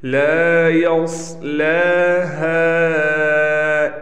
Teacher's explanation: ہا کے بعد الف بھی ہے اور ہا کے بعد الف پر مد بھی ہے، لہٰذا اس کو کھینچیں گے